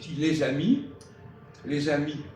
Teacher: tu fais la liaison entre les et amis et en plus tu prononces pas le S final